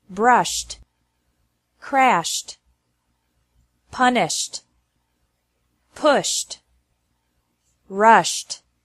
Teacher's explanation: pronounced like t after verbs ending with an SH sound